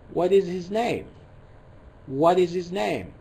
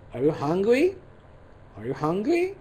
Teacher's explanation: we have falling intonation and rising intonation